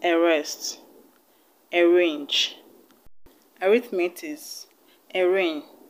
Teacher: that begins with a r and the r is being pronounced you do not pronounce the a as a but you pronounce it as a schwa sound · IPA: ə